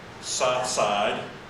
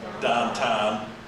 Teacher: Yinzers have a very distinct accent that involves in part substituting the O U and the O W diphthong as in the words south or down with an ah sound. For Yinzers, the words southside becomes sah-side. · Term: Yinzer pronunciation